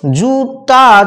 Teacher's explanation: জু উচ্চ স্বরধ্বনি, আ নিম্ন স্বরধ্বনি, অর্থাৎ জীবকে প্রথমে উচ্চ স্বরধ্বনিতে যেতে হলো, তারপর আবার নিম্ন স্বরধ্বনিতে নামতে হলো।